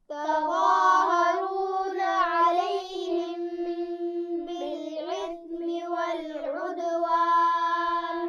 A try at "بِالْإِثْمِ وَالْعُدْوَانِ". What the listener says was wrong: بالإثم والعدوان، بالإثم میں حمزہ ہے، عین نہیں ہے، توجہ سے پڑھیے. بالإثم والعدوان.